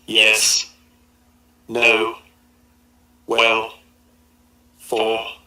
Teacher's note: When producing an utterance, the speaker has a choice of saying it with the pitch remaining at a constant level, that's to say by using a level tone